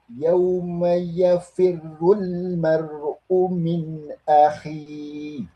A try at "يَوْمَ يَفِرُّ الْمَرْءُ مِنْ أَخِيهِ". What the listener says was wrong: Ya, ini biar lebih sempurna saja. Roknya dari urnya sudah tebal. Yauma yafirul, bukan yafir. Yafirul. Tebal karena dhammah.